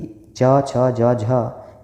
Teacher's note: च छ ज झ के उच्चारण में भी संघर्ष होता है, और ये स्पर्श व्यंजन भी है। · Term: स्पर्श संघर्षी व्यंजन